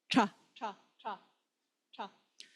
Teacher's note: With the tongue curled up, touching the roof of the mouth about 0.5 centimeter back from the teeth.